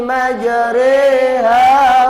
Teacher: Coba ini majriha, ada pelajaran bacaan imalah, artinya memiringkan pada kasroh. Nah, jadi memiringkan bunyi fathah pada kasroh